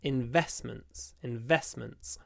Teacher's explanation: in investment we don't pronounce the T it uh it disappears